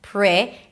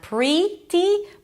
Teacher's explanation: So we start with PR, round your lips a little bit for the R, bring it back, the tongue, pri, and then it's a relaxed I sound, not pri-dee, but pri.